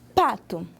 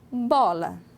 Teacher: O B não é plosivo, mas o ponto articulatório é o mesmo.